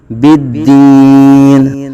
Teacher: دال حرف قلقلہ میں سے ہے اور دال مشدد ہے، جماؤ کے ساتھ قلقلہ یہاں کریں گے